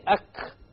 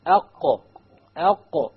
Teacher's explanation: So if you make a mistake and you say ak, which is a kaf, you know that your tongue is hitting the hard palate, which is a mistake. It's supposed to hit the soft palate.